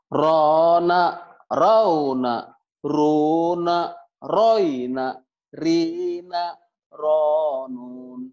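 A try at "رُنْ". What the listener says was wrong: Ro. Jangan panjang. Awas, hati-hati. Jangan. Ronun. Jangan. Yang panjang cuma ronnya doang. Ronun. Ronun. jangan panjang, kecuali nanti dihenti. Kalau dilaguin juga bukan begitu. Nih, kalau dilaguin ujungnya gini. Rona rona rong rona rona rona rona rona ron gitu.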